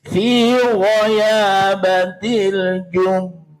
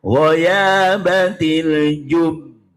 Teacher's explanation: Bila waqaf cara bacanya fi ghayabatil jub. Tahan dulu dua harokat baru dipantulkan. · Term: Qalqalah akbar